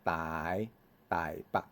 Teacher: 北部，像讲台北，台北呢，第五声伊会变做第三声